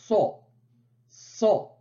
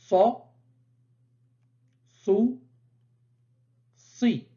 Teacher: Donc, la 14e lettre de l'alphabet sa est dite emphatique. Elle se prononce au niveau du bout de la langue qui vient toucher la face interne des incisives inférieures, sans toucher le palais.